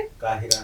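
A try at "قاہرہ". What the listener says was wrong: काहिरा नहीं होता, काहिरा, काफ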